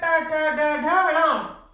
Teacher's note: जो आगे से जीभ है, आपके मूर्धा को टच करेगी, मूर्धा को छुएगी, तो मूर्धा से बोला जाएगा